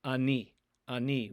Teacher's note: there's a chance that the sound ah will be produced the aleph itself is silent but the vowel ah might go with it